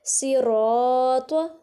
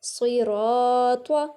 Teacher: صاد موٹا سیٹی کے واسطے، را کو ایک الف کے برابر کھینچیں گے کیونکہ الف سے پہلے زبر مطلب الف مدہ ہے، اور طا کو طا ادا کرنا ہے، طواں یا تا ادا نہیں کرنا.